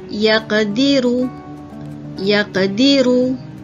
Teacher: Sederhana sahaja lantunan pada huruf qaf yang sukun tersebut, ya, di tengah-tengah kalimah. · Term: qalqalah sughra